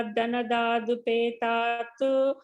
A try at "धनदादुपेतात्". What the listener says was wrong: the third line, sir, the third line, be careful, it's upetat, not tu.